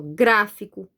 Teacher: Qual é a sílaba forte de gráfico? Gra. Porque, ó, tem um acento, ó.